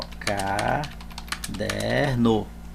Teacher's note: a sílaba tônica é o DER não é a última é a penúltima e quando a sílaba tônica é a penúltima é chamada paroxítona